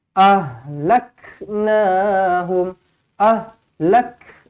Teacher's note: kaf pastikan dibaca dengan hamas, angin.